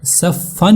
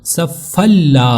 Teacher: तनवीन के बाद लाम है सिर्फ इदगाम होगा गुना नहीं होगा।